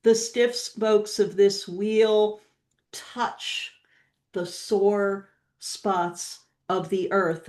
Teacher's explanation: That's this poet has engineered the rhythm so that it's almost as though the spokes of the wheel just kind of lock into or sink into the sore spots of the earth. There's this magical use of a slight pause in the middle of the sentence.